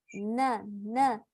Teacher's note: اس سے اوپر کے دو دانتوں کے پیچھے جو جگہ ہے یعنی گمز، اس سے آپ لگائیں گے اپنی زبان تو نکل آئے گا آپ کا نون